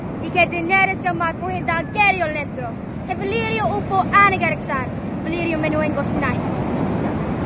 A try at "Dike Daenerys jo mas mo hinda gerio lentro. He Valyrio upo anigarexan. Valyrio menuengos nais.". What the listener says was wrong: The long vowels were not as long sometimes. Certainly you weren't getting the U vowel, but that's all right. There's a vowel in High Valyrian that's written with a Y. This thing is not pronounced E. It's pronounced U.